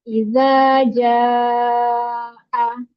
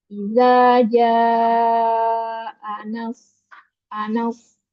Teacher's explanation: maka ketika mat tobi'i berjumpa dengan hamzah, maka suaranya diperpanjang lebih dari 2 harokat. Bisa 4 atau 5 harokat.